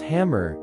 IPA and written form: ˈhæmər (hammer)